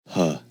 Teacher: ha is the same breathy sound that you hear after the voiced aspirated consonants